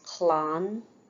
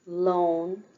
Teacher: The broad L is made with the tip of the tongue pressed against the upper teeth, as in the following words: clán, for children, loan, for lunch.